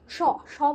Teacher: স কোথায় টাচ হচ্ছে? জিভটা দেখো, দাঁতে টাচ হচ্ছে। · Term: দন্তবর্ণ